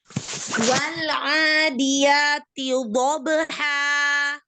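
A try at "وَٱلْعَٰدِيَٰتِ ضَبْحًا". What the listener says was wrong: T-nya keluarin dulu dari makhrajnya. Luruskan kasrohnya.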